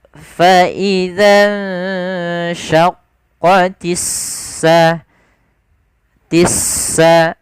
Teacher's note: Kemudian pada lafal alif lam, di sini ada alif lam syamsiyah, yaitu huruf alif dan lam yang ditulis tapi tidak dibaca huruf lamnya, tidak dibaca al sama, tapi langsung ke sin